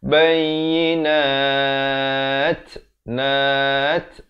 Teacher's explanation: Ada t itu, ada angin di belakang itu. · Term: ta maftuhah